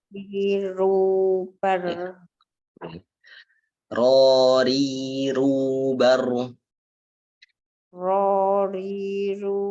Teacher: Ro itu tebal. Kemudian ri itu tipis. Ro, ru itu tebal lagi.